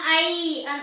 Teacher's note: ஐ அப்படின்னு சொல்லும் பொழுது ஈ என்ற ஒளியில் முடிவடைகிறது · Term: நெடில் எழுத்து